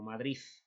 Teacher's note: rasgos como este pronunciación de la de final como una Z